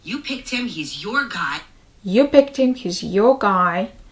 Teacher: So the stress is on you.